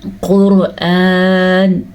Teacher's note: علم عین کا دھیان دیا آپ نے، عین بھی اسی طریقے سے پڑھنا آپ نے۔ قرآن، قاف ہم موٹی پڑھیں گے کیونکہ قاف حروف مستعلیہ میں سے ہے۔ را کو ہم پر پڑھیں گے کیونکہ را ساکن ہے اور را ساکن سے پہلے پیش ہے۔